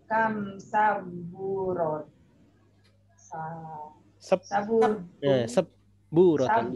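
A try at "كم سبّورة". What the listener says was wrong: Di situ ba-nya tasydid ya, musyaddadah.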